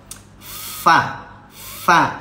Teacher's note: Ujung gigi di atas ini, ujung gigi dirapatkan dengan kulit bibir bawah. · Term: huruf fa